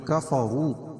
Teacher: کفروا واو مدہ ہے، اس کو 1 الف کے برابر کھینچ کے پڑھیں گے اور وا کو پور پڑھیں گے.